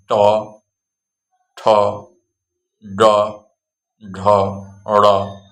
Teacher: मूर्धा से अर्थात जुबान के जड़ के ऊपर वाले हिस्से से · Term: ट वर्ग